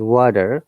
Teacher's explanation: a flap t which is a kind of d